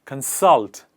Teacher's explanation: called consult the focus is on the second part salt and we put the focus on the second part of the word